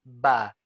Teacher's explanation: Kita harus tunaikan dengan cara mingkem mulutnya bibir atas dipertemukan dengan bibir bawah sehingga menghasilkan suara ba ya bibir miknya rapat ba Ini adalah hak dari huruf ba